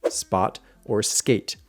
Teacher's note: You want the sound from English words like spot or skate, because those are not aspirated.